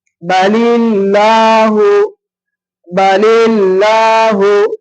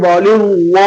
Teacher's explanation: இப்போ அல்லாஹுக்கு முன்னாடி ஜேர் இருக்கும் பொழுது மெல்லினமா உச்சரிக்கணும். அந்த அல்லாஹ் அப்படின்ற மாதிரி இந்த வல்லினமா உச்சரிக்க கூடாது.